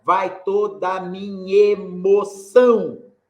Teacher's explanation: Juntou o nhá com e, né? Aí fez uma sílaba só. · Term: elisão